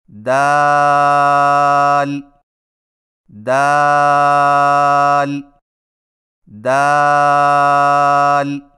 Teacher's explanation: دال کی ادائیگی میں زبان کی نوک کو ثنایا علیہ کی جڑ سے لگا کر باریک آواز میں پڑھیں، یعنی دال دال دال۔